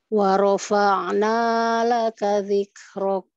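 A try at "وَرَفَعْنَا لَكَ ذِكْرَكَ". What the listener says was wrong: Panjangan naknya. Wa rafa'na laka. Wawunya tipis.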